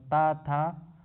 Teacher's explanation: और त वर्ग दंत होती है